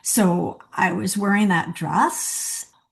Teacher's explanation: And the ing endings were off of the end of words like coming and going. And there was also like an interrogative lilt at the end of sentences like, so I was wearing that dress.